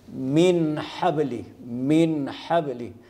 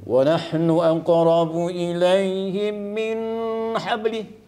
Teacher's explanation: ha jadi dia ni tidak boleh didengungkan sama sekali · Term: izhar